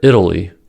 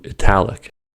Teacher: Italy has the stress on the first syllable, so the T is flapped, but in italic, T is not flapped since it begins the stressed syllable.